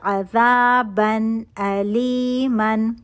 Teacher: 1 count نون کا natural غنہ، تنوین کے اندر نون ساکن چھپا ہوا ہے۔ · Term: اظہار کا رول